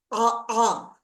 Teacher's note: So ta can become a ah. They will stop the air at the level of the throat and release it